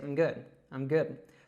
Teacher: we don't really say that full I sound, we just say the I'm good, I'm good.